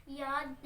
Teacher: زبان کے درمیان والے حصے کو بالمقابل اوپر کے تالو سے لگا کر ادا ہوتا ہے.